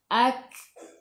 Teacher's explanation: Kaf sifat hurufnya hamas. Kena ada angin. Tapi jangan banyak. Sikit sahaja. Kalau banyak dia jadi melantun.